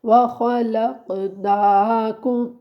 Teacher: کم کے جو میم ساکن ہے وہاں پہ ہم غنہ نہیں کریں گے کیونکہ آگے حروف حلقی میں سے حمزہ آ رہا ہے.